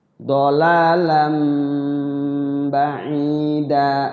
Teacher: Dolalan tanwin ketemu ba iqlab. Nun mati atau huruf bertanwin ketemu ba adalah iqlab. Ada mimnya di ba-nya itu, berubah jadi mim.